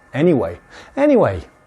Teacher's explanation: anyway often has slightly high intonation